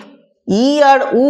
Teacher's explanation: যখন জীব ই আর উ উচ্চারণ করছে তখন জীবকে তার স্বাভাবিক এই যে নিচে থেকে অনেকটা উপরে উঠতে হচ্ছে, তাই এই ই আর উকে বলা হয় উচ্চ স্বরধ্বনি।